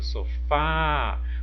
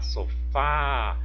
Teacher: Qual que é a sílaba pronunciada com mais intensidade? O fá, né? O fá, sofá. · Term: sílaba tônica